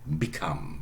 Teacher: stress is on the second syllable